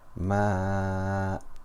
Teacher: We remove one of the fathas and do mad for 2 harakat. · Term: mad iwad